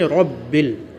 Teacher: ربل پہ را جو ہوگا وہ پر ہوگا